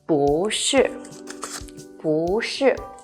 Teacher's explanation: 不 becomes the second rising tone